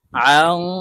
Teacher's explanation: নুন সাকিনের পরে ইকফার হরফ সদ আসছে তাই এই নুনকে নাকের ভিতরে লুকাইয়া গুন্নার সহিত পড়তে হবে